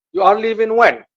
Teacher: the rising intonation for when means that I'm asking for that specific time